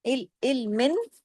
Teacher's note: کھلم کھلا اظہار کے ساتھ پڑھا جائے گا، ناک میں آواز چھپے گی نہیں